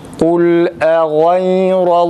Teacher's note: boğazdan A sesi, fakat uzatmadan.